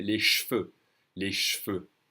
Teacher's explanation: when you have an E without an accent on it in second position, it's the second sound of a word, the French will skip them. So les cheveux, the French will really say les cheveux.